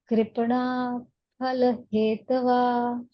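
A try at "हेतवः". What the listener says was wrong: Hetavah. Hetavah. That is the Visarga. Visarga. Don't forget the Visarga. When we say Om Shanti Shanti Shanti He, we don't say Om Shanti Shanti Shanti. Om Shanti Shanti Shanti He. What is that He? That is the Visarga.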